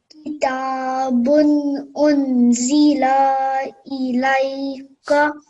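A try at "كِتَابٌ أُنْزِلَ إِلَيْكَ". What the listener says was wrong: Just one thing to be careful about is again your fataka sandama, they need to be 1 second long. Your lam, when you just read it, was slightly longer. So you said la, it was slightly longer than 1 second.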